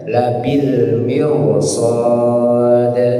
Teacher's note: huruf yang tebal huruf yang tujuh tadi tadi ya maka dia Walaupun dia posisinya baris bawah seharusnya tipis jadi tebal jadi tebal gara-gara bertemu dengan huruf tebal ya contohnya labil mirsad awalnya Mir tipis Mir tipis tapi karena